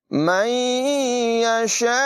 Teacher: وقف ہونے کی صورت میں حمزہ ساکنہ میں آخر میں جھٹکا بھی ہوگا